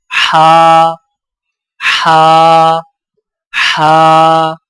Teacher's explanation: حلق سے رگڑ کھاتی آواز ادائیگی کے وقت زبان کی جڑ کو حلق کی طرف مضبوطی سے دباتے ہوئے ادا کریں، جیسے ہا ہا ہا۔